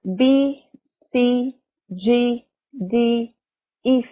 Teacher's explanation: they all have the sound long e the same vowel sound of the word green